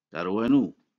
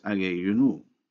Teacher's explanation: The vowel of the possessive pronoun inu is dropped to keep the CV pattern, and so darwa inu is pronounced in fact darwanu.